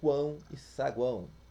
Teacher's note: o som do encontro vocálico tem o ar passando pela boca e pelo nariz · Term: nasal